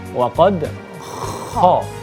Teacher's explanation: Kha itu berada di ujung tenggorokan